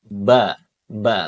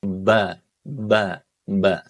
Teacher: Ba ba bibirnya harus dirapatkan. Jadi bunyinya di kedua bibir, Teman-teman. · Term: huruf ba